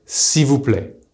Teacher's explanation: you will usually hear SI VOUS PLAIT, using the simple removal of the L in IL